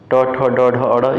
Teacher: ट, ठ, ड, ड, ण, ये आपका मूर्धन्य से होगा